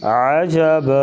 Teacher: 2 زبر کی تنوین کو الف سے بدل کر الف کے برابر ہی لمبا کر کے وقف کیا جائے گا